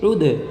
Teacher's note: ऐन दाल पेश उद दाल में कलकला करेंगे क्योंकि दाल हरूफ कलकला में से है